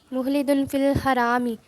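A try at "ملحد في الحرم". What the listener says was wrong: ملحدن، ذرا زور سے پڑھا کرے نا. ملحدن فی الحرام میں نہیں، حرم میں.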